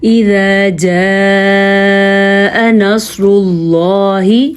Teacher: اللہ کا نام پر اور سواد بھی پر کیونکہ سواد حروف مستعلیہ میں سے ہے